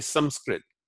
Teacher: So Sanskrit, instead of saying Sanskrit, we say Sanskrit. We're not trying to make it nasalized. We're not trying to make it like the N in the French bon. It's just a simple m. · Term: short m